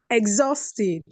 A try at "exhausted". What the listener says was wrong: Exhausted. Very well.